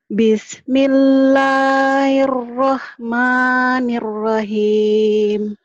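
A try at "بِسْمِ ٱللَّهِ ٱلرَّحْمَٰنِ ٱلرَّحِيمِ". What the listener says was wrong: Hanya ketinggalan tuh. Bismillahir. Jadi kedengarannya gini. Bismillahirrahmanirrahim. Hanya nggak ada sepertinya. Hanya ada penekanan. Bismillahirrahmanirrahim.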